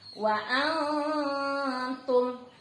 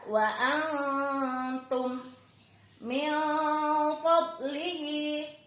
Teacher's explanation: Kemudian kelompok kedua ada yang disebut ikhfa. Ikhfa ini cara membacanya adalah samar sambil ditahan 3 harokat.